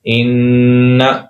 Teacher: یہاں پر 1 سیکنڈ کے برابر آواز ناک سے نکالیں گے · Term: غنہ